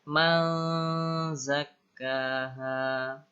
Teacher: Nun sukun ketemu zai. Ikhfa. Ya, samar-samar. Nunnya dibaca samar. Langsung ke huruf zai.